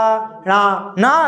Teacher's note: ण ना जो बोला तो नाक से भी निकली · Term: अनुनासिक